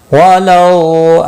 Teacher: واولین ہے، تھوڑا نرمی کے ساتھ کھینچ کر ادا کریں گے